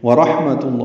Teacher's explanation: واو ہونٹوں کی نہ تمام گلائی سے ادا ہوگی ، را پر پڑھیں گے، ہا ساکن ہے، اس پہ ہم